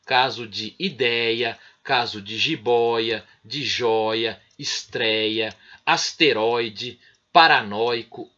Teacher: São aquelas palavras cuja sílaba tônica é a penúltima. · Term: paroxítona